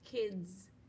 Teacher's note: it's that s pretending to be a z